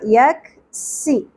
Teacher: یک، کاف ساکن باریک ہوگا. یک سی، سین میں سیٹی آنی چاہیے، سیٹی کی آواز ہوگی اور باریک ادا ہوگا